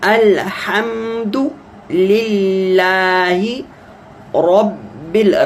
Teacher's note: را کو موٹا کریں چونکہ مفتوح ہے